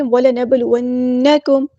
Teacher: تو یہاں پہ کلکلہ ہو رہا ہے، نون پہ تشدید ہے، شد والی نون ہے تو یہاں پہ غنہ زمانی ہو رہا ہے، ایک الف کے برابر ہم رکیں گے · با ساکن ہے تو یہاں پہ کلکلہ ہو رہا ہے